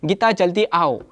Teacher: यहाँ पर आओ जो है शब्द, इसका उच्चारण करते समय थोड़ा खींचा जाता है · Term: प्लुत मात्रा